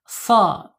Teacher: Yaitu ujung lidahnya menyentuh gigi seri bawah ya.